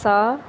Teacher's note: सा जबान का सिरा और ऊपर के दांतों के अंदरूनी किनारे से अदा होता है